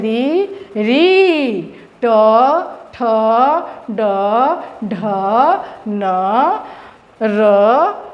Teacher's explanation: ट ठ ड ढ न, र और मूर्धन्य श, इन सब का उच्चारण स्थान मूर्धा होगा